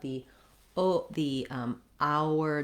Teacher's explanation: even though we have the letter H, we don't make any sound for the H. We just have the hour diphthong.